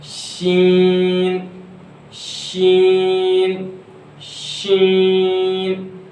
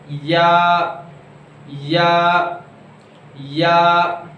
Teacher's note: ये जो है ज़बान के दरमियान यानी वस्ते लिसान और तालु के दरमियान वाले हिस्से से अदा होते हैं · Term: हुर्फ़ शजरिया